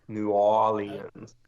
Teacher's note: So you sort of skip over the R